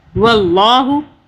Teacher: واللہ، اللہ کو موٹا پڑا، اللہ سے پہلے زبر آ رہا ہے، زبر آئے پیش آئے اللہ کو موٹا پڑھتے ہیں